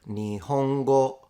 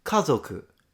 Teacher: The word nihongo, low, high, high, kazoku, high, low, low. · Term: pitch accent